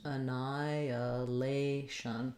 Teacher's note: there's no h pronunciation there so you can see that they have the ni stressed